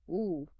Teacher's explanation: Lips are quite rounded, maybe more closed than O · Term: long U